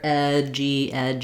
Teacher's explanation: So we just link together edgy. We move in and out of that j sound from the vowels.